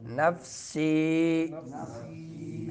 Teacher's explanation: سین باریک پڑھیں گے سٹی والا حرف ہے